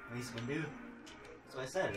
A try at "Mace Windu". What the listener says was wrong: You said Hindu. That's what it sounded like. Windu. Like window, but Windu.